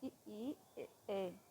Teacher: अग्र स्वर जो जीभ के आगे भाग से बोले जाते हैं